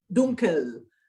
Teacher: make sure it's dunkel, a clear L, dunkel